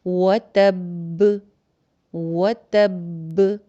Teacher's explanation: اب با یہاں پہ 2 دفعہ ہو گئی تھی لاسٹ والی، ایک با کو آپ نے تا سے جزم لگا کے جوڑا اور دوسری با کے اوپر آپ نے قلقلہ کیا